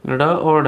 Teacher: उच्चारण के स्थान पर इसमें मूर्धन्य जो व्यंजन हैं वो आपके ड और ढ हैं